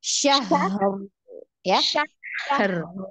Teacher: Ada sifat rokoahnya. Ada aliran suara banyak ya. Jadi ketika sukun itu dialirkan dia agak panjang ya